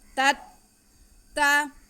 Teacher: لعلکم ما فیہ لعلکم تتقون، تا پہلے تا پہ زبر اور دوسرے تا پہ شد، پہلے تا کا زبر ہم دوسرے تا کے ساتھ ملائیں گے اور پھر اس پہ زبر پڑھیں گے، کھینچنا نہیں ہے۔ تا تت تا، پہلے تا کو دوسرے تا کے ساتھ تھوڑا رک کے ملا لیں گے